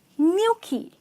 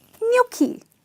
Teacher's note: And it's pronounced as gnocchi. So the G here is silent, and there is an invisible Y here which doesn't appear in the spelling but definitely comes in the pronunciation